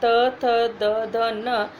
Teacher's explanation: त, थ, द, ध, न, जीभ हमारे दांतों को स्पर्श करती है, तो इसलिए तवर्ग का उच्चारण स्थान हो गया दंत।